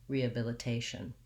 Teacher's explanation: in rehabilitation i still have secondary stress on the re i still have my schwa then i'm going to have secondary stress on bill so it has a little bit of stress because it matches · rehabilitation my primary stress is on the t syllable now the second to last syllable